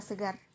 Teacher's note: R ini termasuk dalam bunyi apikoalveolar dengan suara yang bergetar dan termasuk dalam vokal yang bersuara, seperti kata segar. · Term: bunyi R